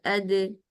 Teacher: आप मखरज बंद करते हैं, यानी जबान तालू से बिल्कुल लग जाती है। लेकिन जब आपने इख्फा करना है तो आपने इनके मखरज को बंद नहीं करना, बिल्कुल एग्जैक्ट मखरज पे नहीं पहुंचना, बल्कि मखरज के करीब करीब रहना। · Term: मखरज पूरा बंद